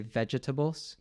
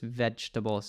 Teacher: I think they might pronounce both the E's, so they might say vegetables. But in American English, we omit the second E, so it's just vegetables.